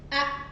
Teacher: dia langsung berhenti enggak ada aliran suaranya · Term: hamzah di sukun